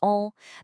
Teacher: produced by letting air flow right through your nose, not just out of your mouth. Mechanically speaking, you're lowering the soft palate at the back of your throat, which pushes the sound upwards. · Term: nasal vowels